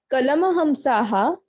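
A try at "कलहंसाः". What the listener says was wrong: Not kalama. Kalahamsaha. So tatra kalahamsaha gangajale taranti. So kalahamsaha.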